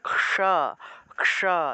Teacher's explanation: প্রথমে ক হসন্তযুক্ত একটা ক উচ্চারিত হয়, তারপরে মূর্ধন্য স উচ্চারিত হয়, অর্থাৎ ক্ষা ক্ষা এইভাবে।